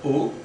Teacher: it is between close and half closed slightly stressed